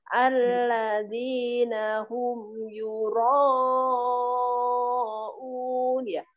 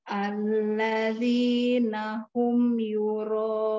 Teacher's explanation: Ini bacaan mat wajib sayang ya, ro-nya panjang. 4 3 ketukan minimal hingga 5.